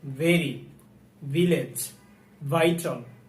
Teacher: ভি, ভি সাধারণত আমরা দুই ঠোঁট মিলিয়ে ভয়ের মতো উচ্চারণ করি, এটা সম্পূর্ণ ভুল। ভি উচ্চারণ করার ক্ষেত্রে উপরের দাঁত আমরা নিচের ঠোঁটের উপরে রেখে উচ্চারণ করব এবং সাউন্ড আসবে ভি।